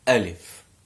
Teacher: Alif, like ha, like the English H, comes from the bottom part of the throat. Alif. No need to overpronounce it, no need to do anything fancy with it, just alif, like and ayn comes from the middle part of the throat, like ha.